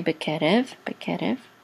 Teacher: So the accent is on ke, bekerev, and this is a mem with a patach and says ma, and here the line right here means that there's a little bit of an accent here, but the main accent is on this syllable.